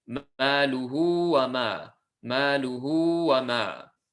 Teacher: ha, which has a single length of a dhamma, elongate it to 2, and in the presence of this waw to denote that, because the letter after is not a hamza. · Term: as-sila as-sughra